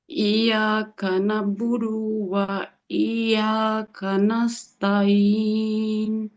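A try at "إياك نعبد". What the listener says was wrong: Iyyaka na'budu wa iyya. Bukan budu no. Budu not long. Iyyaka na'budu wa iyyaka nasta'in.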